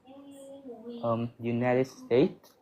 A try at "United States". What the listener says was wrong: Make sure the y sound, the first one of United, is clear enough.